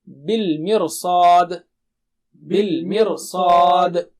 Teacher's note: صاد کی تیاری میں را کو موٹا کر دیں گے، نیچرل ہے۔ تو دہرائیے میرے بعد، را کو موٹا کرتے ہوئے سب حالتوں میں، فرقہ فرقہ، قرطاس قرطاس، بالمرصاد بالمرصاد۔